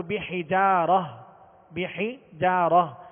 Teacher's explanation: تا گول تا کو ہائے ساکنہ سے بدل کر وقف کریں گے